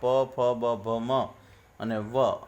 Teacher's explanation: આટલું બોલતી વખતે આપણા બંને હોઠ ભેગા થઈને છૂટા પડે છે. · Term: ઓષ્ઠ્ય